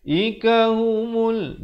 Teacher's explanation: mim baris depan terus naik di atas lam yang bertanda mati. Di sini alif lam qamar ya, lamnya dijelaskan.